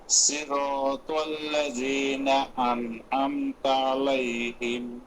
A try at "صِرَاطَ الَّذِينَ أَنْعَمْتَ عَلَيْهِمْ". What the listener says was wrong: এখানেও একই ভুল হয়েছে, সিরাতাল্লাযীনা উচ্চারণ হবে সি, সিরাতাল্লাযীনা, তাল্লাযীনা হবে না। ত এবং তা এই দুটি হরফে একই মাখরাজ থেকে উচ্চারিত হলেও দুইটি হরফের মধ্যে পার্থক্য হচ্ছে সিফাতের পার্থক্য। তর মধ্যে ইস্তেআলা ইতবাক, তার মধ্যে ইস্তিফাল, তা পাতলা হবে, ত মোটা হবে।